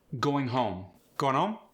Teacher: The O sound. This is one of the signature Philly sounds. It's got kind of an oo sound to it.